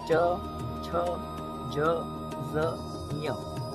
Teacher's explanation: आपकी टंक जो है, आपकी जीह्वा जो है वो थोड़ी सी बेंड होगी, ट्विस्ट होगी और दांतों के ऊपर वाले हिस्से को टच करेगी।